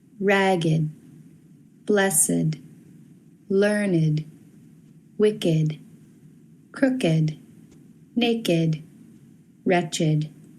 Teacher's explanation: the following ed words used as adjectives are pronounced with id